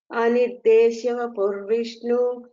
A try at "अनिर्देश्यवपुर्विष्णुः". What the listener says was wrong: So when you split and telling anirdeshya purvishnuhu, we should say the visarga there.